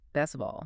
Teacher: the poor T sound gets dropped all the time especially between consonants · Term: elision